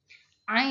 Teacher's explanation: Ain yaitu bunyi tenggorokan tengah. Ihtikaki geseran.